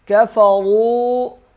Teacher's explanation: را موٹا پڑھیں گے، واو کو 1 الف کے برابر کھینچیں گے